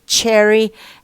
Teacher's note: we can say it's a voiceless palato-alveolar affricate consonant